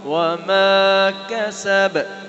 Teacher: بار پر قلقلہ ہے اینڈ پر